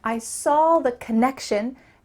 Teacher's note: Let's emphasize the word connection.